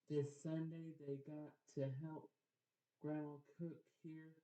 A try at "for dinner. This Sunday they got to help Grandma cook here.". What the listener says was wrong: Oh, so remember, so when you see that period, you need to pause before you read to the next one.